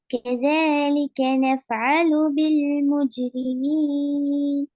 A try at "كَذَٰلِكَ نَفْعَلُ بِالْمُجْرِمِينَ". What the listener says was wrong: இஜு இச்சு என்ற சவுண்டு போகக்கூடாது. كذلك نفعل بالمجرمين இஜு مجرمين.